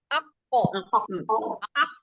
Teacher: jadi suaranya memantul ketika sukun